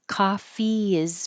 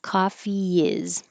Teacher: There's an invisible Y because you're going from the I, E in coffee and then sliding down for the I.